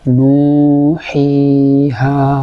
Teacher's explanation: এই 3টা হরফ জফ বা মুখের খালি জায়গা থেকে উচ্চারিত হয়। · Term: মদের 3টা হরফ